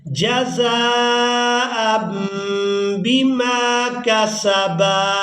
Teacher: تنوین کے بعد با آ گئی ہے تو یہاں تنوین میں جو نون کی آواز ہے اس کو ہم نے میم کے ساتھ بدل کر ادا کرنا ہے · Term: انقلاب